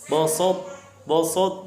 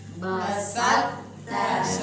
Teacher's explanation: Nah. Kemudian menurunkan pangkal lidah untuk menyebutkan ta